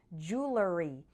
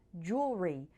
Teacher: some people pronounce it with three syllables like jewelery and others say it more like jewelry with two syllables the pronunciation with three syllables jewelry seems contrary to the spelling